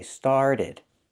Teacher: You can say started, but Americans don't. They change that T to a fast D because it's after an R and before a vowel.